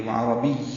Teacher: عربی عین وسط حلق سے ادا ہوگا، را پر پڑھیں گے، با کو یا سے ملا دیں گے اور یا پہ وقف کریں گے.